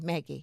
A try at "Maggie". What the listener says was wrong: So it's not like the gi, it's the vowel sound. So like Megan. It'd be like calling me Megan. But so like Maggie instead of Meggie. It's the e sound at the end.